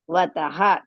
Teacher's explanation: Tat, there are two thas, so slightly stretch it, and va is hrisva, ta is again hrisva, and then in the end if you come across with a two dots or visarga, we have to pronounce.